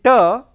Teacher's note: tip of the tongue is touching the teeth ridge like this. So, tip of the tongue is touching the teeth ridge. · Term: alveolar